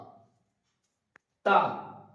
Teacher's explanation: তা তা উচ্চারণ করার সময় দেখবো যে আমরা জিভেটা দুটো দাঁতের সামনের দাঁতের তলে চাপ খেয়ে উচ্চারিত হচ্ছে তা। উপরের দাঁত জিভের আগার উপরে চাপ লেগে তা উচ্চারণ হচ্ছে।